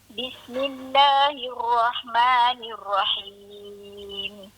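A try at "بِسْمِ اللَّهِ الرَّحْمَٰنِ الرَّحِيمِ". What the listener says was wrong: Ni sini ada masuk huruf ra tadi. Ada jangan bagi dia bunyi bergegar gitu. Hir jangan bagi bunyi. Bagi bunyi takrir. Bismillahirrahmanirrahim. Tu nama kalau dia kata abang takrir nak bagi dia pulang sikit je.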